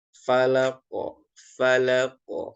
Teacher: Dan uniknya di sini di huruf di bacaan Al-Falaq ini semua ujung ayatnya dia memantul, ada qalqalahnya.